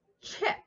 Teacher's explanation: So if your kiddo is calling a chip a ship or vice versa, then you just need to focus on the airflow and say, oh, we have to have that pushed air sound for chip. And we need to make that air come out really fast and use our belly to help force that air out, right?